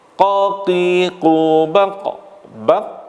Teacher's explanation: Qalqalah adalah suara tambahan yang kuat yang keluar setelah menekan makhraj